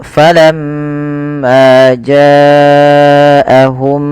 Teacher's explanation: Maka kita tahan dulu suara mimnya ya 2 harakat. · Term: gunnah